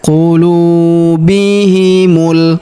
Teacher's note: Huruf mu langsung sambung ke huruf lam yang berharakat sukun. Alif lam qamar.